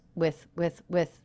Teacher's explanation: the word with is not reduced but it's very flat in pitch because it is unstressed